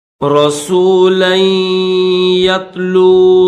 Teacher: اس لام کو یا کے ساتھ ملائیں گے، یا کے اوپر تشدید بھی ہے اور زبر بھی ہے، تو لام کو یا کے ساتھ ملا کر پڑھیں گے